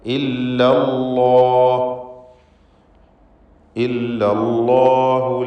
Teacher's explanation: ഇല്ല എന്ന ലാമും അള്ളാഹ് എന്നതിലെ ലാമും രണ്ടും ശബ്ദമുണ്ട്. ആദ്യത്തെ ഇല്ല എന്ന ലാമിൽ തർക്കീഖാണ്, രണ്ടാമത്തെ അള്ളാഹ് എന്ന ലാമിൽ തഫ്ഖീമാണ്.